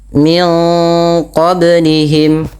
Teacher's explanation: suara nunnya disamarkan kepada makhraj daripada huruf qaf yang berada di pangkal lidah kita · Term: idgham